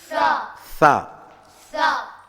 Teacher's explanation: நாக்குடைய நுனியை பல்லுடைய மேல் பல்லுடைய முன்பல்லுடைய விளிம்பில் வச்சு காற்றை வெளியே விடும்போது வரும் சா.